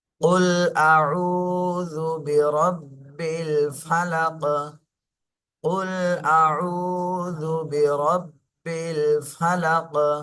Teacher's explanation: সাকিন দিলে কফ, কফের উপরে সাকিন থাকলে কফ কলকলা হয়ে যাবে।